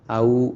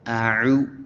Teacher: ഹംസയും ഐനും എടുത്തു വരുമ്പോൾ രണ്ടും ഒരേപോലെയുള്ള അക്ഷരമാവാതെ ഔ എന്നാവാതെ അഉ എന്ന് ഐന് വ്യക്തമാക്കിയിട്ട് ഉച്ചരിക്കുക.